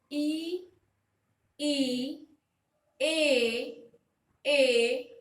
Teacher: अग्र भाग की बात की जाए तो आप बोलकर देखिए ई, ए। आपका जो जीवा का आगे वाला जो भाग है इसके ऊपर एक स्ट्रेस अनुभव होगा, एक जोर अनुभव होगा।